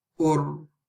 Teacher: When we're stopping on the ra, when there's a dhamma before it, again it's heavy